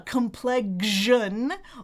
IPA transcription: kəm ˈplɛg ʒən